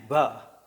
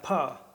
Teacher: So when we try to distinguish between p and a b sound, paying attention to placing of where our tongues and lips and other parts of the vocal system are, you'll see that they're almost identical except the voicing that is introduced in a b and no voicing that is introduced in the p